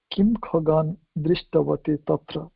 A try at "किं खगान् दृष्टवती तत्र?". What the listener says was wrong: So here the tone has to change because we want to ask. Ashoka wants to ask, did you see the birds there? Not asking, Ashoka is not asking which birds did you see there.